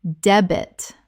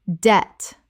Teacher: The B is completely silent.